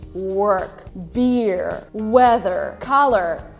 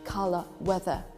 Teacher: in america we would always say work beer weather color but if you want to sound more british you pronounce these words without pronouncing r